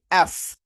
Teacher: আমি যখন উচ্চারণ করি এফ, দেখবেন একটা শেষে একটা বাতাস বের হয়ে আসছে।